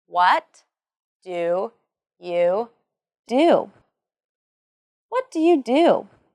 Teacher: there is the falling intonation and the emphasis on what and do in the sentence.